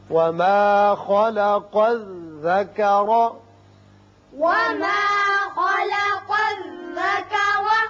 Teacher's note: خا پر ہوگا، قاف کو بھی پر پڑھتے ہیں، یہاں را کے اوپر زبر ہے، اس کو بھی پر پڑھیں گے۔